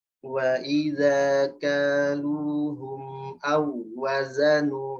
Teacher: habis tekan wawnya awwaza, langsung ke za, waza. Karena wawnya 1 harokat. Nah, jangan sampai jadi Wazanuhum.